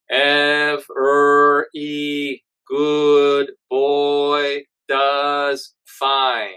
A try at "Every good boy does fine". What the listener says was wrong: A little more focus on the nose. Think about it like you're talking, you're speaking from your eyes.